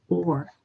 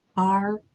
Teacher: it's a round mouth or has to be different from the dropped jaw r